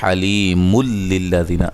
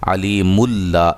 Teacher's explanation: جب ملا کے پڑھیں گے حلیم للذین تو یہ ادغام بلا غنہ ہوگا